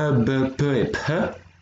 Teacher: les consonnes bilabiales, donc celles qui sont formées à l'avant de la bouche, donc bilabiales avec les 2 lèvres